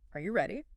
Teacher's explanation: you naturally raise your pitch towards the the end